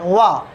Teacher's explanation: इसका केवल दंत है, लेकिन इसका दंतोष्ठ है वा। इसका जब हम उच्चारण करेंगे तो होंठ हमारे जो हैं ओष्ठ वह आपस में मिलेंगे नहीं